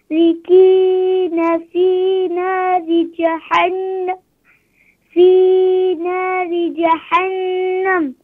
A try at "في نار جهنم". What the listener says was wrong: Ha pronounce from bottom of throat, don't pronounce middle of throat. في نار جهنم.